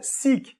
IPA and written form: sɪk (SICK)